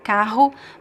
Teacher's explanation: It could be the H could be a little bit softer or stronger kahu but always on your throat right. Uh there are old pronunciations of the this word that would be different but today this is the common pronunciation.